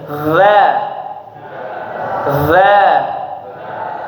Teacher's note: Huruf za tempat keluarnya dari ujung lidah dengan ujung gigi seri atas, gigi depan, ya, dikeluarkan ujung lidahnya. · Za ini tipis, ya, berbeda dengan dha yang tebal.